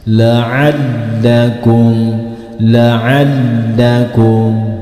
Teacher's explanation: jika membaca huruf lam yang bertasjid sedikit disentak. Hati-hati, tidak boleh didengungkan, hanya sedikit disentak.